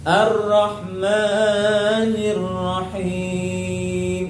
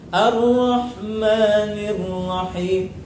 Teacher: Ada banyak orang ketika baca Ar-Rahmanir Rahim, mimnya terlalu panjang.